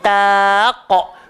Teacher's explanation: ingat yang gemuk cuma qaf, huruf ta jangan gemukkan